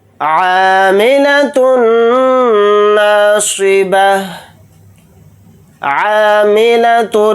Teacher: تا کو نون میں ملائیں گے، نون کے اوپر تشدید ہے تو نون کے اندر غنہ کر کے پڑھیں گے، صاد کو یہاں پر موٹا پڑھیں گے اور یہاں پر حالت وقف میں تا کو ہا ساکن بنا کر پڑھیں گے۔